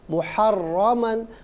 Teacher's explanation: रा पर ज़बर है, रा को पुर करके पढ़ेंगे